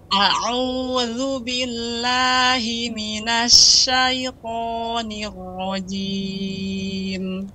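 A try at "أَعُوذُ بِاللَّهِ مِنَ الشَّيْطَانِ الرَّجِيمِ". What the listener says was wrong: Shinnya lebih tebal, lebih banyak lagi tafasyinya, menyebarnya udara. A'udzu billahi minasy syaitan, tapi tetap harus terbuka mulutnya. Minasy syaitanir rajim.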